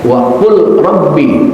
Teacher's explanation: bacaan yang kedua saya baca wa Qul Rabbi lamnya terdengar jelas